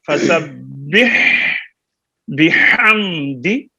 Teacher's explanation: دال کو لمبا نہیں کرنا. بحمدی ربک، دال کی زیر اور ربکا کے کاف کی زبر کی مقدار ایک جیسی ہے.